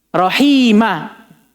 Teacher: kalau kita berhenti di atas fathatain, tidak boleh kita sukun. Melainkan kita hilangkan tanwinnya, bunyi nunnya.